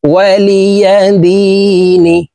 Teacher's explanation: দি তিন আলিফ টেনে নুনকে সাকিন করতে হবে, কারণ মদের হরফের বামের হরফে ওয়াকফ হইলে মধ্যে আরজি তিন আলিফ টেনিয়া পড়িতে হয়, এই মদকে মধ্যে আরজি বলা হয়।